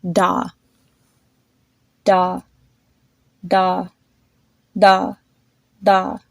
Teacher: each time the pop of air grows smaller and it sounds lighter